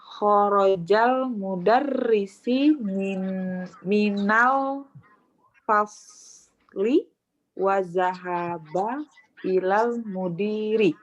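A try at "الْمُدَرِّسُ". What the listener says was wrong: Ya, satu koreksian di harokat mudarris. Al-mudarrisu. Al-mudarrisu. Dia kan subjek dari kata kerja kan? Pelakunya dia, pelaku itu masih dhammah.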